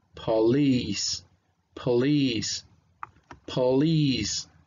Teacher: So that doesn't sound like a po, sounds like pa, pa, because of the schwa. And then we have the stress sound in the second syllable. So it's gonna sound like a long E right here.